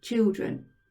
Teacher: the e sounds like an uh in the word children